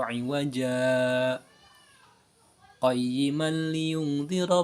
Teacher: Nah, jadi itu boleh ketika diwasol, ketika diwasol maka itu harus disaktah cara bacanya. Jadi berhenti sejenak tanpa nafas.